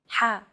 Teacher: You want to make an H sound, but with the throat constricted a little.